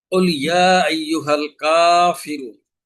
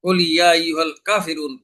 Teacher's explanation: কাফের উপরে আলিফ সগীরা আছে, অর্থাৎ এক আলিফ পরিমাণ টানতে হবে, কিন্তু না টেনে যদি আমি কুল ইয়া আইয়ুহাল কাফিরুন পড়ি, তাহলে ওই মাদের স্থলে হরকত পড়ায় তেলাওয়াত অশুদ্ধ হয়ে নামাজ বাতিল হয়ে যাবে।